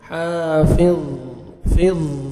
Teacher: ज़ा को मोटा करके पढ़ना है और पुर करेंगे ज़ा को